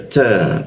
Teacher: Ta itu ujung lidah bertemu gigi dia